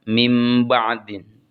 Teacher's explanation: Kemudian bertemu dengan ba maka Nun sukunnya diubah ke huruf mim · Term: iqlab